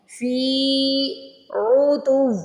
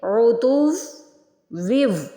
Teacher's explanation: تا کو یہاں پہ واو سے ملانا ہے، سب سے پہلے تا کو واو سے ملانا ہے، پھر واو کو واو سے ملانا ہے۔